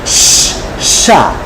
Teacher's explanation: জিবার আগা সামনের দাতের উপরে চলে আসবে পাতলা করে একটু বাতাস বের করে দেন